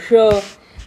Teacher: आपली थोडी जीभ कर्व होते, टंग कर्व होते आणि आपल्या जो पृष्ठभाग आहे, मागचा भाग आहे, तिकडे बघा स्लाइटली टच होणार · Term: मूर्धन्य श